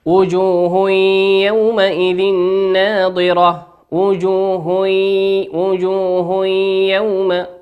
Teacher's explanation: تنوين أتى بعده حرف الياء، والياء من حروف الإدغام بغنة يغن بمقدار حركتين